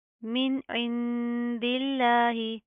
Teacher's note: یہاں پر سمپل اظہار ہوگا، ہم نون کی آواز کو ظاہر کریں گے. یہاں پر ہم نے اخفا غنہ نہیں کرنا.